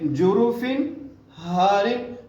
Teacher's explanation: وجہ یہ ہے کہ تنوین ہے نا 2 زیر، تنوین کے بعد حروف حلقی میں سے ہا آ گئی ہے، اس لیے جروفن پہ غنہ نہیں ہوگا